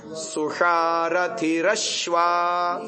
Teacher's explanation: अब यहाँ तीनों आ रहे हैं, तीनों आ रहे हैं एक ही वर्ड में। सु में तो आ रहा है दंत्य, शा में आ रहा है मूर्धन्य और श्वा में आ रहा है तालव्य